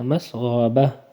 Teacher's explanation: با زبر با، مسغبہ، تا دو زیر تین، مسغبۃ، وقفاً مسغبہ، آخر میں ہا پڑھیں گے، با کو جھٹکا نہیں دینا ، مسغبہ، با کو ہا کے ساتھ ملیں گے، با ہا